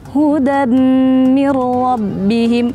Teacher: kesalahan kedua ketika mimnya bertasydid itu tanpa dengung, padahal harus dengan dengung. Kayak orang ngirung.